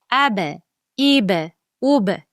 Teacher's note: Sukunli bo'lgan vaqt ab, ib, ub kabi tebratib talaffuz qilinadi. Qolqola. Tebratish.